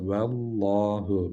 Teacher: Vallahu derken lamı kalın okuduk. Çünkü kendisinden önceki harfin harekesi üstün.